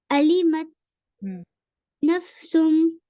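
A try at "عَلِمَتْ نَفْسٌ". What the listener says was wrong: सुम पे गुना कीजिए. नफ्सुम पूरी क्लियर आवाज हो.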